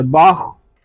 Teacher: خا حلق کے اوپر والے حصے سے ادا ہوگا